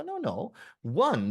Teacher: the initial sound of one is actually a consonant sound it's a w